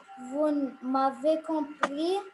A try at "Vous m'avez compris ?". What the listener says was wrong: Vous m'avez compris, c'est une question, il faut changer la voix un peu.